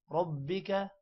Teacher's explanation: را موٹا ہوگا، با پر تھوڑا ٹائم دینا ہے شد کی وجہ سے. با 2 بار پڑھا جائے گا، ایک بار را کے ساتھ اور ایک دفعہ اکیلے میں.